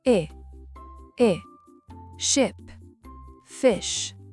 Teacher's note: relâchez votre mâchoire c'est un son très bref entre le i et le e français. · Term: I court